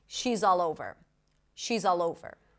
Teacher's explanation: The Z of is becomes the beginning of all and the L of all becomes the beginning of over.